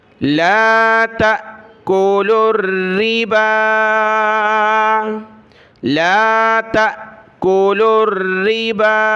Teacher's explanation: را کے نیچے یہ زیر ہے اور تشدید کی وجہ سے اس کو سختی کے ساتھ پڑھا، اور با کے اوپر کھڑا زبر اور مد ہے تو اس کو زیادہ کھینچنا ہے